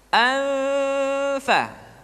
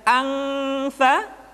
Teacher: nun mati tanwin ketika digunakan posisi makhraj sudah berada pada huruf fa. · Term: ikhfa